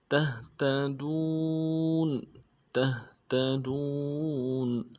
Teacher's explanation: وقف کی صورت میں نون کو ساکن کریں گے